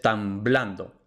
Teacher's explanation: está en uno de los pocos contextos en los que B permanece oclusiva que es detrás de m entonces tan blando la B es efectivamente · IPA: tam.ˈblan.do